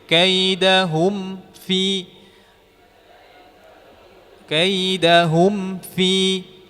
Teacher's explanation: jangan sampai mimnya teridghamkan kepada fa. Kaidahum fi huffi. Jadi kita harus menyempurnakan mimnya. Kita rapatkan bibir.